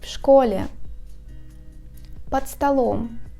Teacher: A preposition followed by a word is a single phonetic word. If after a preposition ending in a voiced consonant comes a word beginning with a voiceless consonant, then a voiced consonant in the preposition is deafened, and vice versa.